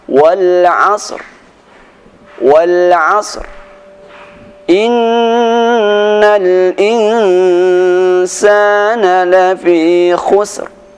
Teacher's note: suara sad diberikan suara dengan samar-samar, dan suara ra tetap dibaca dengan sempurna.